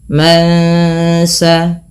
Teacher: ketika bertemu Sin nunnya disamarkan kepada bunyi Sin terdengar bunyi Eng maka ini kita namakan dengan bacaan tajwidnya ikhfa Hakiki ikhfa Hakiki